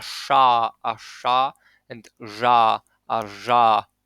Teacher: the tongue is slightly more curled back when you say Polish retroflex consonants